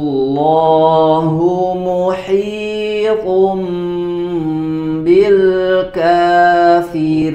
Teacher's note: tanwin bertemu dengan huruf ba diberi tambahan gunnah, ditahan dulu. Muhitum, tahan sebelum dilanjutkan ke bacaan selanjutnya. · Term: bacaan iqlab